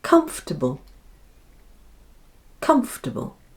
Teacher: because the vowel is unstressed and so takes on the sound which is that common little schwa sound again